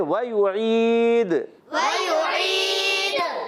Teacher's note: واو کی ادائیگی ہوگی ہونٹوں کی گولائی سے · عین کی ادائیگی ہوتی ہے حلق کے درمیان والے حصے سے اور یا ساکن سے پہلے زیر ہے، یا مدہ ہے، مگر دال ساکن ہو رہا ہے.